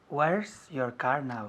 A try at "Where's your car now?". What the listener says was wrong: Muy bien. Where's your car now? Where's, con la contracción.